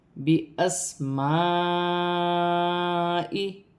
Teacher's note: سین ساکن ہے، سین کو حمزہ کے ساتھ ملا کر پڑھا جائے گا۔ الف مدہ بن رہی ہے، ایک الف کی مقدار کھینچ کر پڑھا جائے گا۔